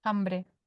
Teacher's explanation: se convierte casi en la H aspirada nuestra